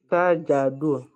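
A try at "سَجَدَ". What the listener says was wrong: Non, c'est pas Do. C'est la fatha ici, au son A.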